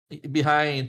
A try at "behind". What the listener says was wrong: I think I heard the J at the end too.